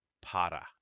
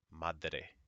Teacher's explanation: an R it just makes a small kind of a D sound